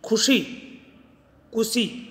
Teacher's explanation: खै जो महाप्राण है वो किस में बदल गया, कै में बदल गया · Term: अल्प प्राणीकरण